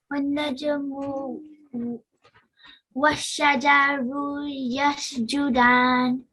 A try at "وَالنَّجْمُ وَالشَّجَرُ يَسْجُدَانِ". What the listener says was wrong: Keep in mind that you just have to prolong for 1 second. Yeah, don't prolong.